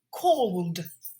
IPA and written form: kɔːld (called)